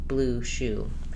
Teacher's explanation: Let's look at the high rounded back vowel oo, as in blue shoe. The symbol for this vowel oo is simply the lowercase letter u, oo, and I use blue shoe as a reminder. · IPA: /u/